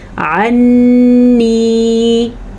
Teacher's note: عنی، غنّہ اس کو کہتے ہیں جب آپ کی آواز غنّے کی ناک میں چلی جائے. عنی، جب آپ نون پہ رکیں گے تو خود بخود ہی آپ سے غنّہ ادا ہو جائے گا